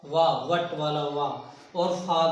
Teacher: वा वट वाला वा, और फा भी आपका दंतोष्ट ही है, ये दंतोष्ट होता है।